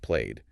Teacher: Notice no extra syllable. It just blends in.